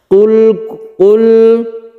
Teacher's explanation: Qul kullum ini kita dengungkan, tanwin bertemu dengan mim, yaitu idgham biguna. Kemudian membaca lam itu tidak terlalu kita tekan dan tidak terlalu kita lepas. Ini namanya sifat tawassut atau tengah-tengah.